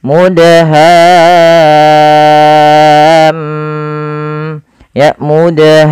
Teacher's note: Kemudian karena di sini selanjutnya ada huruf mim berharokat tasydid, maka di sini mimnya ada bacaan gunnahnya. Maka suara mimnya kita tahan ya teman-teman.